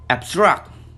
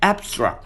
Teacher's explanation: The rule is, if a pair of prefix plus stem words exist, both members of which are spelled identically, one of which is a verb and the other of which either a noun or an adjective, then the stress is placed on the second syllable of the verb, but on the first syllable of the noun or adjective.